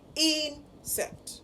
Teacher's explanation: the stress would fall on the first syllable. So it is insect.